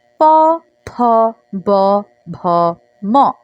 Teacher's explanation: ওষ্ঠধ্বনি, যেগুলো ওষ্ঠের সাথে মানে ঠোঁটের সাথে লাগিয়ে উচ্চারণ করতে হচ্ছে। যেমন প, ফ, ব, ভ, ম।